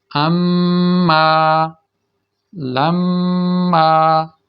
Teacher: میم شد والی آ گئی یا نون شد والی آ گئی ہو تو اس پر غنہ ہوتا ہے، یعنی ساری کی ساری آواز ناک سے ادا ہوتی ہے۔